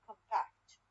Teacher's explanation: compact الستريس على المقطع الثاني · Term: stress shift